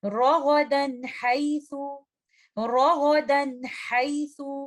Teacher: ہم یہاں پر غنہ کو زیادہ دیر ہولڈ نہیں کریں گے، بلکہ انکمپلیٹ غنہ کا اس کو ٹائم دیں گے